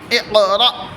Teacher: حمزہ ساکنہ کے پڑھنے میں جھٹکا ہوتا ہے